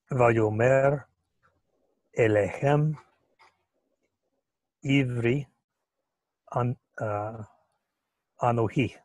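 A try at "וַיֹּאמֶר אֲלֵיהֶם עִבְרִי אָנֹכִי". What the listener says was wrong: Okay, so normally that's right. Anohi. Anohi is normally accented here. Just like Ata. Ata is normally accented here. When it's at the end of the verse or in pause, it likes to flip that accent over. So instead of Ata, This is Ata, and this is Anohi.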